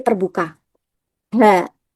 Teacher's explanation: Jadi letaknya ada di em pita suara di sebelah sini. Huruf H diucapkan dengan posisi pita suaranya sedikit terbuka.